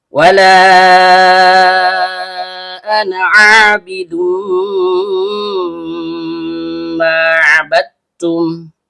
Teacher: lam ujung lidah bertemu dengan langit-langit bagian depan.